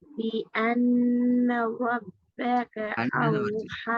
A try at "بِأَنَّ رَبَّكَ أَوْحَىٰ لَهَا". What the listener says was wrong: வரல, உங்களோட பீட சவுண்ட் வெளிப்படுத்தப்படல. பி.